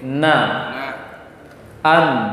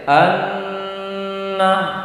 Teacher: pasti ada hidungnya, ada suara yang keluar dari rongga hidung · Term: gunnah